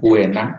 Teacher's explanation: u-nya seolah-olah menjadi w, tidak terlalu jelas tetapi penekanannya atau sonoritas kenyaringannya ada pada e. Nah, sehingga disebut dengan diftong turun.